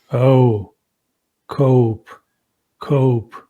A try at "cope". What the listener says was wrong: We gotta hold the vowel longer. Cope. Cope.